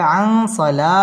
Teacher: আল্লাযীনা হুম মিম সাকিনে ইজহারে খাস গুন্না ছাড়া পড়তে হবে আং নুন সাকিনের বামে সদ আসছে সদ ইকফার হরফ গুন্না করে পড়তে হবে